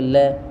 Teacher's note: जैसे ल, तो हमारी जो जीभ है वो ल, बोलने पर पता चले ल बोलेंगे तो क्या करें ल, तो हमारी जो उसको क्या बोलते हैं, पार्श्विक व्यंजन। यानी जो जीवा है हमारी मसूड़े से लगती है, उसके अंदर एक ही वर्ण आता है और वो है ल।